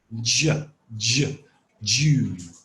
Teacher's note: The only difference is the j in June is voiced.